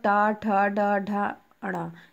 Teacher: ये जो है मूर्धना के सहायता से बोले जाते हैं। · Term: टावर